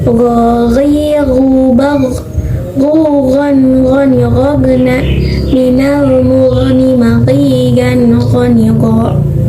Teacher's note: huruf go yang dimana keluarnya dari tenggorokan atas atau ujung tenggorokan